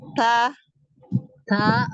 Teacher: ujung lidah bertemu dengan gusi atas